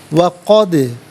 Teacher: دال ساکن ہے لیکن حرف قلقلہ ہے، تو آواز لوٹتی بھی محسوس ہونی چاہیے